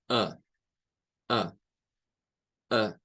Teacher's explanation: aquí viene a aparecer el schwa como una vocal central media.